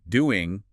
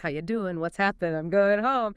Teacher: It's a very common feature, especially in informal situations or when the ing word isn't stressed. It's a shift from a velar nasal to an alveolar nasal N.